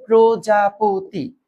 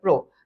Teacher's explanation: কারণ আদিতে রফলা, সো অ এর উচ্চারণ ও এর মতো